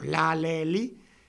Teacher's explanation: Si decimos L o la, le, li, tocamos con la punta de la lengua los alvéolos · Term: alveolares